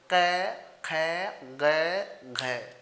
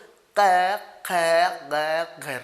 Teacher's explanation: आपका जीभ का पिछला हिस्सा कंठ को टच करेगा जब आप क बोलोगे। क और बोलो क, ख, ग, घ।